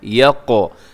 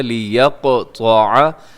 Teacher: لِيَقْطَعَ تھوڑا سا مشکل لفظ ہے، لام زیر لی، یا زبر قوف، یقو، یہاں قاف کو قلقلہ کیجیے گا